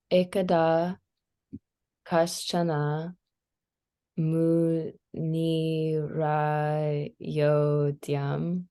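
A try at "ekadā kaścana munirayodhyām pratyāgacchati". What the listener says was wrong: there you go. You got it.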